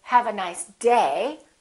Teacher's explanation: i'm still going to emphasize the word day but i'm not going to make my pitch go up